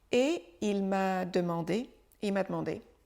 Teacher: Le « e » disparaît, demandé. Et il m'a demandé, il m'a demandé, et il m'a demandé de faire la musique d'un de ses films.